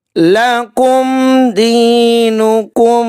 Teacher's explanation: میم ساکن کے بعد دال ہیں، یہاں پہ اظہار شفوی کا قاعدہ اپلائی ہو رہا ہے، غنہ نہیں ہوگا۔ دینکم، یا ساکن سے پہلے زیر ہے، یہاں پہ یا مدہ کا قاعدہ اپلائی ہو رہا ہے، 1 الف کے برابر ہم نے کھینچ کر ادا کرنا ہے۔